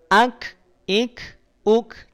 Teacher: dari sisi suara dia terhenti alias punya sifat syiddah · hams pada huruf Kaf terutama saat dia sukun maka cukup percikan napas saja